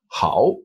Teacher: remember to do that full down and up third tone